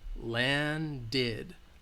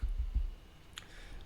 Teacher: Land ends with the D sound, so we're going to add that id at the end.